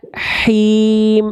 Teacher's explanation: Jadi dibisikkan dulu Bunda, dari tengah tenggorokan H kecil.